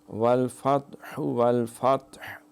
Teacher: یہ تا پہ قلقلہ نہیں کرنا